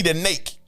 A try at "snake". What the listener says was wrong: my baby can't pronounce the S.